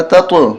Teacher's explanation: قلقلہ کریں تط، آواز طا کی ڈبل آئے